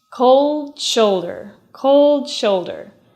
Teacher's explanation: those two words link together /d/ /sh/